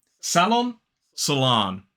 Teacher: And notice that in the first syllable, American pronunciation used the schwa, and in the second syllable, it's that long ah, salon. Whereas in British English, we use the ah vowel sound in the first syllable and the o, like in sock, in the second syllable